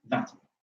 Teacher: When you lenite a form like matin, where the vowel is nasalized, the vowel remains nasalized. Matin. And some nasalization may actually also occur on the v itself.